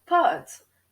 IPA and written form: pɑt (pâte)